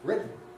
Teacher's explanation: in written, what you actually get in American English is a glottal stop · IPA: [ˡrɪʔn]